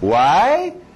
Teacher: Why sempre vai subir. É sempre usado para fazer pergunta.